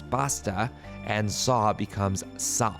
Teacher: words like pasta or saw are pronounced with a more Spanish sounding a sound